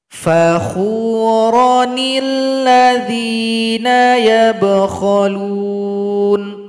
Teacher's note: huruf sebelumnya ro yang awalnya kita berhenti dipanjangkan, sekarang nggak boleh panjang